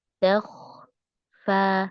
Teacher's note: Di kho-nya terdengar berhenti suaranya.